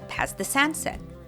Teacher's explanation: Usually when we have a combination of a T or D and a TH sound, we only pronounce the second one. So here, the T in past is dropped and all three words combine.